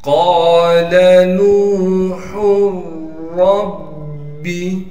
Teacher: ہا کو را سے ملا دیں گے. ہا کے اوپر تنوین ہے، پڑھنا تو چاہیے تھا نوحن، لیکن ہم تنوین کو نہیں پڑھیں گے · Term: ادغام